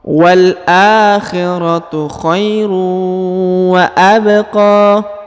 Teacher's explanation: Huruf qa dipanjangkan 2 harokat karena di atasnya terdapat alif kecil dan di depannya terdapat alif bengkok atau alif maksurah.